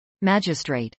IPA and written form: mˈædʒəstrˌeɪt (magistrate)